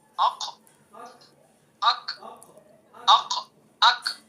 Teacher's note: اق اق اق زبان کی جڑ اور اس کے مقابل اوپر کا تالو۔ اک اک اک تھوڑا سا اوپر کو، زبان کی جڑ سے تھوڑا سا اوپر آئیں گے۔